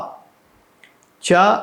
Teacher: చ అంటే నాలికి అంగటికి నోటికి అంగటికి తగిలించి తగిలించడం ద్వారా బయటికి వచ్చే శబ్దం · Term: తాలవ్యం